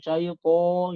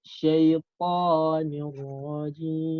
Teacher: Jadi O-nya itu nggak terlalu bulat banget O-nya. Jangan syaiton gitu, jangan.